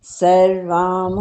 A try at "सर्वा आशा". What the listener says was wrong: सर्वाम नहीं है, सर्वा ही है, सर्वा आशा, सर्वाम नहीं है। सर्वा आशा।